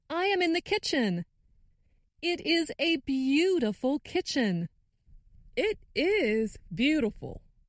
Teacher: makes the word is longer and louder. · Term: stress